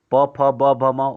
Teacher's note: म ओष्ठ वर्ण है, प फ ब भ म, उसका उच्चारण ओठ से होता है